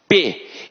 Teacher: eu encosto os dois lábios, ó. P. Então é por isso que a gente chama o P de bilabial.